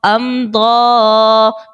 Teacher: میم ساکن کے بعد با اور میم کے علاوہ ضاد ہے تو اظہار شفوی کا قاعدہ اور غنہ نہیں کریں گے